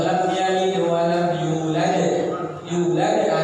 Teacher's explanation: Kubro itu pantulannya besar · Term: qubra